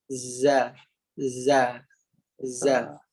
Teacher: huruf Zai keluar pada hujung lidah ditekan pada belakang gigi kacip bawah. Ataupun kita sebut lidah dalam keadaan rata.